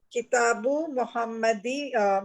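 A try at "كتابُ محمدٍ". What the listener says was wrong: محمد دی نہیں ہوگا محمد دی نہیں ہوگا دن وائے محمد دن کیونکہ یہاں پہ دو پیش ہے نا تو ہم نیچے بھی دو زیر ہی لگائیں گے.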